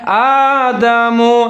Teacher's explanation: حمزہ کے اوپر کھڑا زبر ہے، ایک الف کے برابر لمبا پڑھیں گے